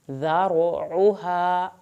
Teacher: پڑھا جائے گا، تیوں پہ غنہ ہوگا دیر لگے گی، ذارعوہا را کو پر کرنا ہے، ذال کو نرمی سے پڑھنا ہے ، عین کو حلق سے پڑھنا ہے، اوہا سبعون ذراعا، سب